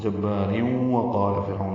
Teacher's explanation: یہ وقفاً را پر ہے. جبار اگر ملانا ہو تو یہ را باریک ہو جائے گا، کیونکہ اس کے نیچے دو زیریں ہیں، اور آگے واو پر تشدید بھی ہوگی، پھر ادغام ہوگا.